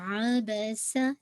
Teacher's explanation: सीन की sound बहुत sharp होनी चाहिए, व्हिस्लिंग साउंड